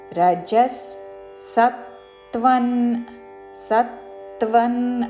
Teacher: విసర్గ తర్వాత స తో పదము మొదలైనది కాబట్టి స ఉచ్చారణ